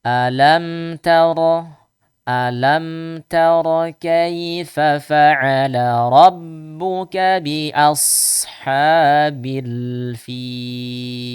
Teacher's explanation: Di situ ada huruf mim. Kita baca huruf mim yang sukunnya sukun izhar, jelas. Maka sedikit alirkan suaranya.